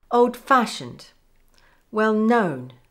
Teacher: for compound adjectives, the main stress is on the second part.